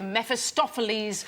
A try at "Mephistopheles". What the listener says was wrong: Mephistopheles. I think you said meth.